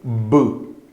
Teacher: ela é bilabial, ó. Você precisa juntar os dois lábios e fazer a explosão do ar. O L, ele vai ter aquele som de...